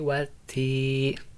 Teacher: bacaan alif lamnya itu kita lewatkan, tapi kita langsung baca ke huruf yang selanjutnya itu huruf ta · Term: alif lam samsiah